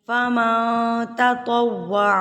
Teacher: باریک اکفا کریں گے، کیونکہ یہ تا ہے، تا باریک ہے۔ تطوع، واؤ جو ہے آپ نے ہمیشہ ہونٹوں کی گلائی سے ادا کرنا ہے۔